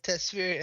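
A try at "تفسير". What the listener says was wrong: Tafsir, my friend, it's called it's called tafsir, not tasfir. No, you said tafsir, tasfir.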